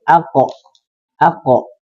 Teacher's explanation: ketika jumpa dengan huruf ko dalam keadaan sukun, maka dia harus pantulkan, qalqalahkan.